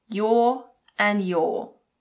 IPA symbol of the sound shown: jɔː